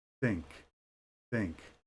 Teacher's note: there's no vibration in the throat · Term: unvoiced, Unvoiced